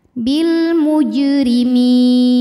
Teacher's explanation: Sukun didahului harakat kasrah kemudian huruf yang disukunkannya adalah huruf nun maka huruf mim ini panjangnya boleh dua boleh empat atau enam harakat asal konsisten dalam sekali bacaan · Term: madidli sukun